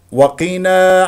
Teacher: قاف مكسوره مفخمه مرتبه اخيره مرتبه الخامسه